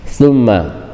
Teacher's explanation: Ini sama dengan summa yang ayat sebelumnya, harus didengungkan karena ada dua huruf gunnah